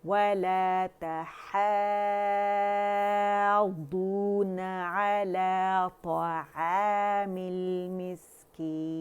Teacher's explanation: طا موٹا، عین باریک ہے